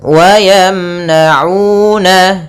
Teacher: Pada bacaan wa yamna'una ada una, ada bacaan mad tabi'i yaitu panjang 2 harakat ditandai dengan dhamma bertemu waw